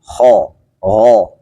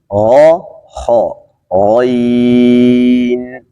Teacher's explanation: حرف غین مثل که قبلا گفتیم خا غا چون مخرجشان یکی هست ابتدای حلق میباشه